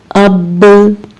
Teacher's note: बा का जो हर्फ है वो दोनों होंठों के मिलने से अदा होता है, लेकिन साकिन आवाज को सुनने के लिए जरूरी है कि इस हर्फ से पहले जेर, जबर या पेश हो। · बा पे आवाज मखरज से टकराकर वापस आ गई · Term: कलकला